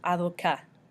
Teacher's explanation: you don't pronounce the T at the end